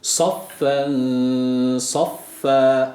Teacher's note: sat harfi kalındır haliyle a sesi veriyoruz